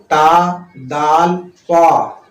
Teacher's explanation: طا کا جو مخرج ہے وہ آپ کو منہ گول کر کے نکلتا ہے، منہ گول ہو جاتا ہے، آواز گول ہو کے نکلتا ہے